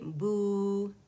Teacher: زبان پیچھے سے ریزڈ ہے تھوڑی سی